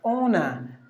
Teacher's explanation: There are only N, two syllables. You have to give the stress for the first syllable